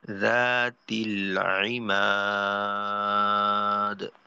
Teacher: ওয়াকফ করলে দালে সাকিন পড়বো, আর মিমকে তিন আলিফ টানবো মাদ্দে আরজি হওয়ার কারণে, মাদ্দের হরফের পরে ওয়াকফ।